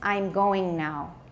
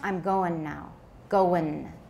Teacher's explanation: Sometimes in casual pronunciation, we say n instead of ing.So the formal pronunciation is I'm going now.